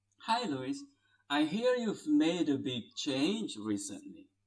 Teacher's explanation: If it is a statement, then the tone will be just normal. It's a falling tone at the end. So pay attention to the word recently.